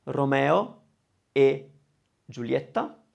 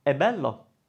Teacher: E, the closed e by itself means and the open e by itself means is. So that's the only time where you'd be better off pronouncing it one way or the other.